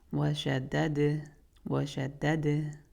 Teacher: Then we have dal, fatha, wa, shada. And then the second dal has sukoon, so we'll only say the d sound, but bounce on it.